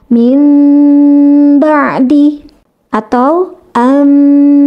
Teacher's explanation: Yang dimaksud dengan intibaqu syafatain yaitu dengan merapatkan kedua bibir itu tidak ditekan. Hanya mempertemukan kedua bibir secara lunak tanpa tekanan. Sehingga suara mim yang ditimbulkan dari iqlab atau suara mim dari ikhfa syafawi itu samar suaranya. Karena memang iqlab dan ikhfa syafawi itu suara mimnya harus samar ya.